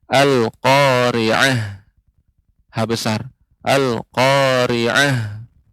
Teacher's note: Ta'al marbutah ketika berhenti disukunkan atau diwakafkan, ya. Ta'al marbutah ketika wakaf maka berubah menjadi huruf ha.